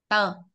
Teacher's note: ra hơi. Ra hơi. Đầu lưỡi chân răng.